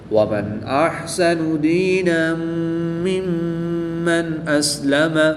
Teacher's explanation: دو زبر کی تنوین کے بعد میم حروف یرملون میں سے ہے تو یہاں پر ادغام مع الغنہ ہوگا، غنہ کر کے پڑھیں گے۔ میم مشدد میں ہمیشہ غنہ ہوتا ہے تو یہاں پر بھی غنہ کر کے پڑھیں گے،